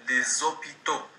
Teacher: Il y a une liaison entre le S de l'article les et le O, les hôpitaux.